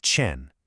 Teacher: The sound is made with the front part of your tongue pressed against the back of your teeth, like the chi in cheese, but much sharper, with a little puff of air.